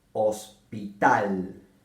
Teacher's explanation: La última sílaba de hospital es la más fuerte o la más notoria de la palabra. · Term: la sílaba tónica